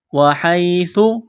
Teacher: سا کو پڑھتے وقت زبان تھوڑی سی باہر نکالیں گے